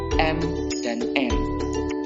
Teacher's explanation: konsonan nasal udara keluar melalui rongga hidung